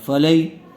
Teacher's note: یا ساکن سے پہلے زبر آیا ہوا ہے، اس لیے یا لین کا قاعدہ ہوگا. اس کو نرم آواز سے اور جلد ادا کریں گے.